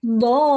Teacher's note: സുക്കൂന് വന്നു. മദ്ദിന് ശേഷം സുക്കൂന് വന്നാൽ നമ്മൾ അവിടെ എന്ത് ചെയ്യണം? 6 അനക്കം ദീർഘിപ്പിച്ച് ഓതേണ്ടതാണ്.